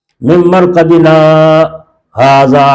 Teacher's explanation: یہاں پڑھنے کا طریقہ یہ ہے کہ آواز تو بند ہو جائے مگر سانس نہ ٹوٹے. من مرقدنا ھذا، اب یہاں چھوڑو، سانس بیچ میں لو نہیں لینا ہے، آواز بند کر دینا ہے. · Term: سکتہ